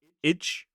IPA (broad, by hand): ɪdʒ